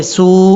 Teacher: سین کو واؤ سے ملائیں گے اور یہاں پر واؤ کو لمبا بھی کریں گے